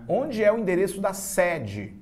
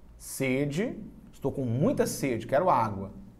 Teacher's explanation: Então é sede, o E fechado, o E, e o E aberto. Sede, aberto, fonema aberto, sede, fonema fechado.